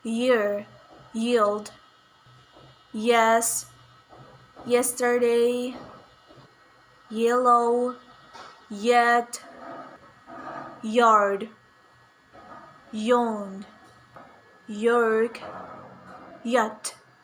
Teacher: voiced palatal approximant sound ya